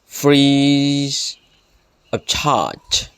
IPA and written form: ˌfriː əv ˈtʃɑːdʒ (free of charge)